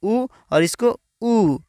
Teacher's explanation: बड़ी ऊ को बोलने में छोटी ऊ की उपेक्षा थोड़ा ज़्यादा समय लगता है, यानी बड़ी ऊ को थोड़ा ज़्यादा समय बोलेंगे, छोटी ऊ की उपेक्षा थोड़ा ज़्यादा समय, जैसे कि इसको ऊ और इसको ऊ।